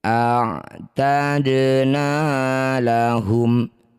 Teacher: Dal sukun di tengah bacaan disebut qalqalah sugro. Pantulkan dal kecil saja pantulannya.